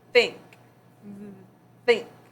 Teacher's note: The sound is not voiced because it does not make your cords vibrate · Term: unvoiced